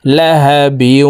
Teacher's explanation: তানউইনওয়ালা বাটি তাসদিদওয়ালা ওয়ার সাথে গুন্নার সহিত মিলাইয়া পড়তে হবে।